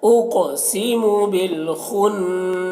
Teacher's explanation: قاف کو پر پڑھیں گے اور قلقلہ بھی کریں گے